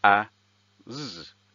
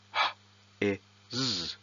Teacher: the grapheme <s>, corresponds to the /z/ sound not the /s/ sound